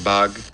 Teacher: f2 goes up f3 goes down they kind of come together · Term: formant transitions